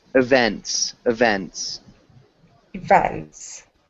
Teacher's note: There's just the second syllable that's emphasized